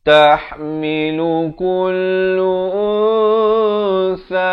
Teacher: Jadi samar, nak kata nun pun tidak, sa pun tidak, dengan 2 harakat di sini ikhfa hakiki.